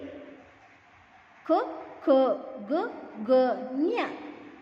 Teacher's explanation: ಕಂಠದಲ್ಲಿ ಉತ್ಪತ್ತಿಯಾಗತಕ್ಕಂತ ಅಕ್ಷರಗಳಿಗೆ ನಾವು ಕಂಠ್ಯ ಅಂತಹೇಳಿ ಕರೀತೀವಿ